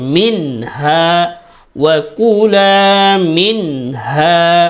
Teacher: এখানে গুন্না ছাড়া সুন্দর করে একেবারে ক্লিয়ার স্পষ্টভাবে পড়ব।